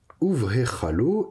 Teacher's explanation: comme mon B est précédé d'une voyelle, qu'est-ce qui se passe? Eh bien, il perd son dagesh, il devient un V · Et c'est purement phonétique. Donc vav avec un schwa en dessous, si j'ai une consonne bilabiale après, au lieu d'avoir V, je vais avoir OU pour faciliter la prononciation.